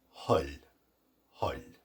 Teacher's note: And the letter T, when it receives chez vous, when it is lenited or softened, it becomes TH, which in modern Irish is pronounced H. Just an H sound, a breathy H.